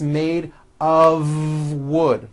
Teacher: it's not a wood with an unvoiced F it's all voiced and it's all connected